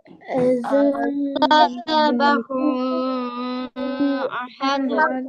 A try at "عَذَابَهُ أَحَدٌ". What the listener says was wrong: ও, নাকে নেওয়া যাবে না, নাকে যাবে না, শুধু টান হবে। আযাবাহু আহাদ।